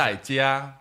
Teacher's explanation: Strong, assertive fourth tone, and then the singing first tone.